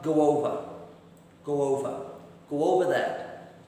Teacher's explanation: the W will jump into the middle so going over will become go over · After the word go, okay, which finishes with that sound, O, the W will jump into the middle. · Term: W sound